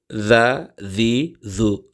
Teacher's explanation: முனி நாக்க மேல் பல்லுல வச்சு ஜா ஜி ஜு அப்படிங்கிற உச்சரிப்பை தரும் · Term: தால்